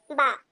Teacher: बा का मखरज क्या है? दोनों होठों के हिस्से को सख्ती से मिलाकर खोलने पर हरफ बा अदा होता है। दोनों होठों के हिस्से को, ये जो होठ है हमारे, इन दोनों हिस्से को आपस में मिलाएंगे और फिर सख्ती से मिलाकर खोलेंगे।